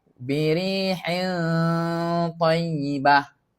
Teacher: Ta tu huruf tebal. Jadi bunyinya akan tebal sedikitlah.